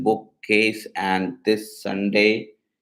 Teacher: Similarly, in this Sunday, the S sound from this and the S sound from Sunday are pronounced together. These double consonants can create a longer, more distinct sound at the junction of words.